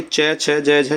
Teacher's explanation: ये तालव्य में आते हैं